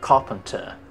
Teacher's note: R tidak dibaca karena R bertemu P, P consonant dan R di akhir.